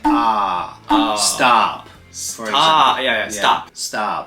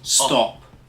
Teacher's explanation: for the short o sound in American you'll probably hear ah